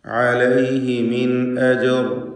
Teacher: അജർ എന്നതിൽ ജീമിൻ്റെ സുക്കൂൻ ഖൽഖല സുഗ്റ നൽകി ശബ്ദം ഹറക്കത്ത് പോലെ വ്യക്തമാക്കേണ്ടതാണ്.